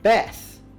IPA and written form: bɛθ (Beth)